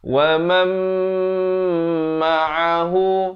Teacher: ma'a di pertengahan kerongkong · Di sini idgham bi gunnah daripada waman, tapi bila datang mim jadi wamam. Tapi jangan lupa dengungkan dua harakat.